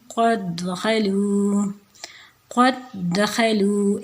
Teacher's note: جیسے اگزامپل میں دیکھیں قد دخلوا، قد دخلوا، اس والے جو دال ہے نا، پہلے والے دال ہے، اس کو ہم نے نیکسٹ والے دال میں انٹر کر دینا ہے بس، تو آواز صرف ایک دال کی آئے گی، دونوں دال کی الگ الگ نہیں آئے گی۔ قد دخلوا، ٹھیک ہے، تو یہ والا جو دال ہوگا اس کو اگنور کر کے نیکسٹ والے میں ملا دیں گے، اس کو اس میں انٹر کر دیں گے، تو جب آواز آئے گی پروننسیشن میں، یہاں پہ اس کو پروننسیٹ ایسے کریں گے قد دخلوا۔